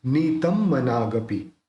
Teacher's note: अब देखिए यहाँ पे जो त के ऊपर बिंदी है, तो यहाँ पे म है, तो म बोलते समय होठ मिल जाते हैं, तो इस ये जो बिंदी है उसका उच्चारण अपन म करेंगे।